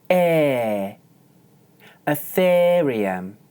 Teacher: for the stressed second syllable, I hold one stable pitch.